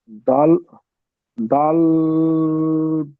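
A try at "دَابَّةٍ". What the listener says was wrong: দাল নয়, দা টান দিয়ে ধরেন। দাবাতিন।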